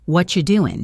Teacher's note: The what and are and you merge into a single unit, whatcha.